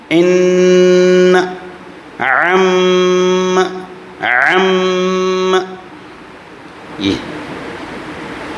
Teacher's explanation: نون مشدد، وہاں آواز ناک میں لے جانا ہے